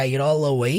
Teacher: Aí você vai juntar esse it all. Você vai juntar o all com away. Vai ficar it all away, que é o jeito que ele fala.